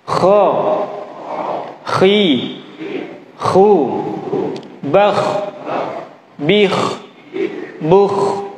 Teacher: huruf kho selalu ada getarannya dimanapun